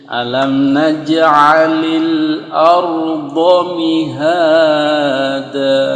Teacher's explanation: Da itu kalau kita berhenti jadi panjang, namanya mad iwad. Tetapi kalau kita lanjut, panjangnya jadi hilang. · bunyi ceklik atau ceklek. Qalqalah. Alam naj'alil, ingat huruf jim, alam naj'alil arda mihada.